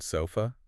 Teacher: In phonetics, it's represented by an upside-down E. It's basically the sound of an unstressed syllable just collapsing into a lazy sound. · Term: the schwa